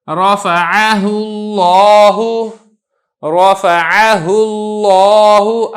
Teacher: لفظ اللہ کو میں موٹا کر کے ادا کر رہا ہوں، کیوں؟ کیونکہ اس سے پہلے پیش آ چکی ہے، اور اگر اس سے پہلے زیر ہو تو یہ باریک ہو کے ادا ہوگا، جیسا کہ للہ، ابھی چونکہ پہلے زیر ہے اس لیے آپ نے اس کو موٹا کر کے نہیں پڑھنا ہے۔